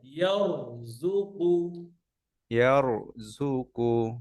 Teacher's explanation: রয়ের আওয়াজ বন্ধ হবে না